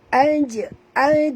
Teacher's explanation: huruf jim apabila dimati di tengah-tengah kalimah kita kena lantun